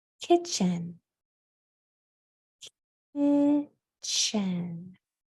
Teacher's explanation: You can't hear the T. There's a T in the spelling, but you can't hear the T. It's blended in with the CH sound.